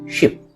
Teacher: short বা স্বল্প দৈর্ঘ্যের ই শিপ শব্দে ব্যবহৃত হয়েছে, যা অপেক্ষাকৃত সংক্ষিপ্তভাবে কম ডিউরেশন নিয়ে উচ্চারিত হয়